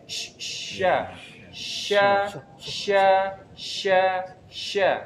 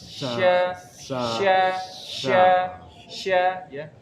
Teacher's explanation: huruf shin itu punya sifat tafashi. Tafashi itu udara menyebar di rongga mulut.